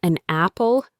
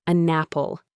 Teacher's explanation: One of the most frequent is when a word ending in a consonant sound is followed by a word starting with a vowel sound. We link them together as if they were one word.